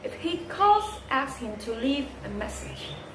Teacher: Conditional sentences. The tone rises in the first clause and falls gradually in the second clause.